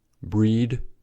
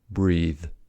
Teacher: duh is an alveolar voiced stop and the is an interdental voiced fricative. Duh has popping in it, but the can continue the sound.